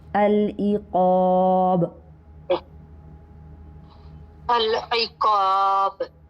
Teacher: با کو جب ہم ساکن کریں گے تو یہ حروف قلقلہ میں سے ہو جائے گا، تو یہاں پر قلقلہ ہوگا العقاب.